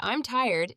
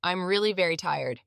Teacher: American English is stress timed, meaning that the important words get equal time while the less important ones are sped up. So when you say, I'm tired, it takes the same amount of time as saying, I'm really very tired. The little words speed up, but the key ones slow down. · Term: stress timing